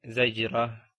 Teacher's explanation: جب آپ اس پہ رکیں گے تو آپ نے اس تا کو ہا بنا کر اس کے اوپر سکون لگا دینا ہے